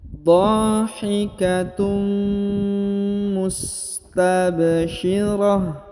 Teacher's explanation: Ditahan, ditekan, dan didengungkan. Huruf tanwinnya unnya melebur ke huruf mim dan seakan-akan menyebut huruf mim